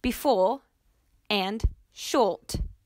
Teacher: the r is dropped before the consonant or when in a terminal position like in the words before and short